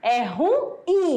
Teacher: É oxítona, a sílaba mais forte é a última.